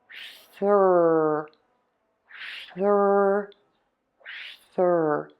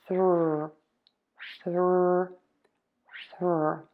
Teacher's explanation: The back of my tongue is pulling way high up, and the tip of the tongue is either flipped back or it is pointing down. It is not touching the teeth. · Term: R sound